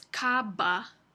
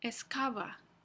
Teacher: sin embargo en otros contextos en otras posiciones en las palabras el fonema B Se realiza como fricativa en lugar de oclusiva